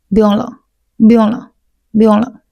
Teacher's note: 不用两个字，它会贴在一起，然后了就比较轻